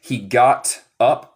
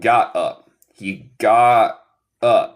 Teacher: So, si tú dices he got up, está correcto. Pero en mi acento, yo como el T final y yo digo got up.